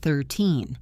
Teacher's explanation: 13 has a long E sound in the middle, and the stress is on the second part,